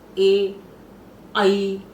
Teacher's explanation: आप ए और ऐ बोलेंगे, ए ऐ, तो ये कंठ से भी बोला जाएगा और साथ में थोड़ी सी जीभ आपकी तालु पर भी टकराएगी, ज्यादा नहीं लेकिन कम टकराएगी।